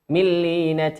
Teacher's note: ولا نقرأها من كأنها بغنة، لا، كأنها بغير غنة، لأن حرفي الغير غنة في الإدغام هما اللام والراء. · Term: الإضغام بغير غنة